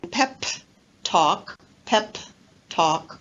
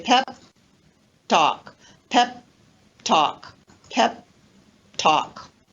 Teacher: i don't release the final p i leave my lips together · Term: unreleased consonants